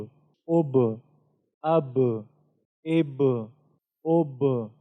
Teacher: با کے اندر صفت قلقلہ ہے، تو یہ جو ٹکراؤ ہم پیدا کرتے ہیں یہ صفت قلقلہ کی وجہ سے